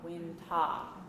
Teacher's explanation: Ta, winter, and we don't pronounce the R at the end